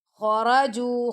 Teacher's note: ख को भी मोटा पढ़ेंगे। र को भी मोटा पढ़ेंगे क्योंकि ख जो है वो मुस्तालिया में से है। · خا کو بھی موٹا پڑھیں گے، را کو بھی موٹا پڑھیں گے کیونکہ خا جو ہے وہ حروف مستعلیہ میں سے ہے. خص ضغط قض، تو اس کو ہم نے موٹا پڑھنا ہے.